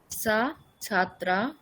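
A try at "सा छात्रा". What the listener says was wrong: না, আপনি সহ বলছেন না সা বলছেন, বুঝতে পারছি না। সা বললেন, সা দীর্ঘ টেনে বলুন। ছয় আকার তৈরি ফল আকার দুটোই দীর্ঘ আছে। সা ছাত্রা, এষা ছাত্রা, এরকম করে বলুন।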